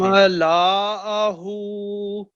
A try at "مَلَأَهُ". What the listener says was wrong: نہیں, لام پھر آپ لمبا کریں. ملأہ.